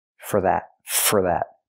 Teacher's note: We hear for pronounced as fur, because it's not a stressed word. For that. Not for that, but fur.